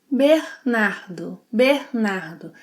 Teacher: She aspirates the –r sounds. Below is the link to a lesson where you can learn when the –r can be aspirated and when it shouldn’t.